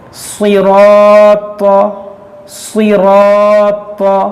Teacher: یہاں پر دیکھیں صاد حرف مستعلیہ ہے, اس کو موٹا کریں گے, اور را کو بھی موٹا کریں گے, را پر زبر ہے. دیکھیں الف سے پہلے موٹا حرف ہے, تو اس الف کو بھی موٹا کریں گے.